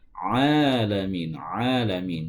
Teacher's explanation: Karena ain itu keluarnya di tengah tenggorokan.